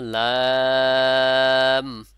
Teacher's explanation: যখনই লাম বলবো তখন এই দুই লাস্টে এসে দুই ঠোঁট এক হয়ে যাবে